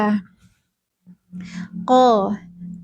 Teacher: Pangkal lidahnya menyentuh langit-langit bagian tulang. Jadi suaranya itu lebih dalam dari makhraj K. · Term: huruf qo